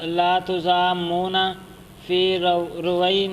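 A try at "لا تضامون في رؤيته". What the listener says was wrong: رویتی تا نہیں ہے کہ نون ہے؟ آپ کیوں نون پڑھ رہے ہیں؟ تا پڑھیں۔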